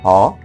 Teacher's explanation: Occurring at the glottis, the space between vocal cords